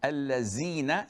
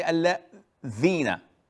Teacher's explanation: All what you have to do, the difference between the z and the is taking a tip of your tongue outside of your mouth. Not outside of it, but just put it at the border.